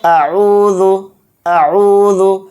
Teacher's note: واو پیش عو ہے، یہاں پر واو مدہ آ گیا تو عین واو پیش عو کو ایک الف کی مقدار کھینچ کر پڑھیں گے اور عین کو بھی اچھے سے حلق سے نکال کر پڑھیں گے